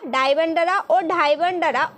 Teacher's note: উচ্চারণের সময় জীভের অগ্রভাগ মূর্ধা থেকে নিচের দাঁতের ওপর আছড়ে পড়ে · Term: তারিত ব্যঞ্জন